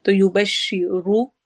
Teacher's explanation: شین جو ہے اس میں حروف شجریہ میں سے ہے، آواز پھیل جاتی ہے شین کو ادا کرتے ہوئے